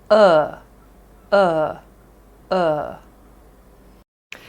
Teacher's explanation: you will feel a vibration in your throat as it's also a voiced sound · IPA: /ʊ/